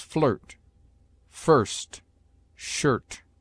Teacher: I is often sounded before R as a short U, as flirt, first, shirt.